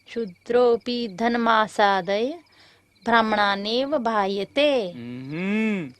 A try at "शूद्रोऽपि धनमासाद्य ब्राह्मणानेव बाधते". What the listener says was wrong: ब्राह्मणानेव बायते नहीं, ब्राह्मणानेव बाधते।